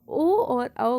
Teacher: ओ और औ का उच्चारण स्थान कंठ और ओष्ठ होता है।